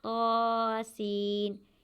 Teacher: طا کو زیادہ نہیں کھینچنا اور سین کو کھینچنا ہے کیونکہ اس کے اوپر مد ہے